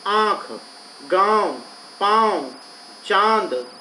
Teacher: इसमें नाक और मुंह दोनों से आवाज बाहर आई है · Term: अनुनासिक